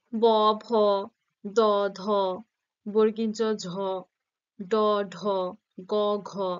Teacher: ঝ ড ঢ গ ঘ এগুলো যখন উচ্চারণ করছি কি হচ্ছে স্বরতন্ত্রের কম্পন সৃষ্টি হচ্ছে একটা এবং কণ্ঠস্বর একটু গম্ভীর হচ্ছে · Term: ঘোষ ধ্বনি